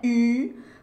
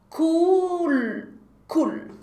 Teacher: No final a língua encosta no céu da boca.